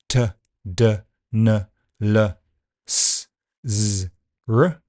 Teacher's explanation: And if you put your tongue touching the teeth, that's dental sounds, th, th. Then tongue touching the gum just behind the teeth, that's the alveolar ridge, so these are alveolar sounds, t, d, n, l, s, z, r.